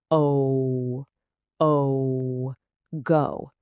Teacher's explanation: your mouth is making two sounds that glide together. It moves from an O to a W sound. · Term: long o, diphthong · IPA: /əʊ/